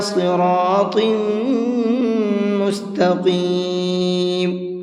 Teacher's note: اِلَى صِرَاطٍ، صاد کو منہ بھر کے پڑھیں گے اور طم کے اندر غنہ کریں گے، اس لیے کہ تا کے نیچے تنوین ہے اور تنوین کے بعد میں میم ہے۔